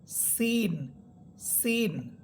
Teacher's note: সিন এর মাখরাজ হচ্ছে জিহ্বার অগ্রভাগ সামনের নিচের দুই দাতের আগের সাথে লাগবে।